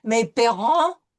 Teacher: And then it is followed by an EN. So we're going to have the uvular R followed by a nasal vowel combination.